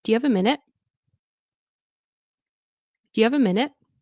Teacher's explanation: And it's a polite request. You can hear the rising tone.